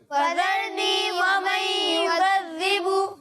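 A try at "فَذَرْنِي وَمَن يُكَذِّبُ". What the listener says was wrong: یکذبو نہیں، ابھی بھی غلطی ٹھیک نہیں ہو رہی. فذرنی ومن یکذب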